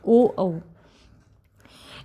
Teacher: कंठ ओष्ठ जो कंठ और ओष्ठ के संयोग से बोले जाते हैं।